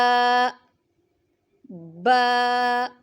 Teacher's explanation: دونوں ہونٹوں کے تار حصہ سے ادا ہوتا ہے۔